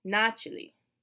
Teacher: In the plural, the stress is back on the first syllable, начали. But we spell it with an A, but we still pronounce the second A like an E.